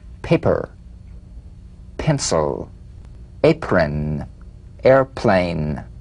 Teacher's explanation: p is played with a light springing apart of the lips just like for the bee on the springing away feel a